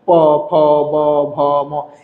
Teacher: তারপরে দেখেন পবর্গীয়, নিজের দুই ঠোঁট, অন্যের না কিন্তু, নিজের দুই ঠোঁট স্পর্শ করে এই ব্যঞ্জনগুলো উচ্চারণ করা হয়। নিজের দুই ঠোঁট স্পর্শ ছাড়া এই ব্যঞ্জনগুলো উচ্চারণ করা যাবে না।